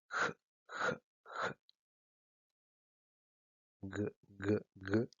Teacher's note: Y luego los sonidos velares son aquellos en los que el dorso de la lengua, es decir, la parte posterior, se toca con el velo o paladar blando